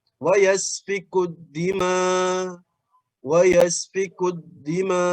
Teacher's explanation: Wa yasfikud dima jadi hamzahnya sudah diibdal menjadi huruf alif ya. Kalau waqaf di situ.